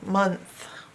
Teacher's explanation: And this is the part you have to learn by heart, that O's not making its normal sound. It's making what you call a schwa sound.